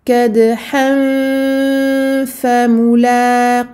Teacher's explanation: Donc on garde une fatha normale, mais dans la deuxième fatha, le noun soukoun sera caché et on s'apprêtera à ce moment-là à se positionner vers un fa. Donc avec les dents du haut sur la lèvre du bas.